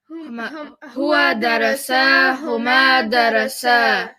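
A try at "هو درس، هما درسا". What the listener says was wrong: Your darasas sound the same. That's a problem. Because you're saying huwa darasa, huma darasa, and it all sounds the same. One of them needs to sound short. The other one needs to sound long. So huwa darasa, huma darasa.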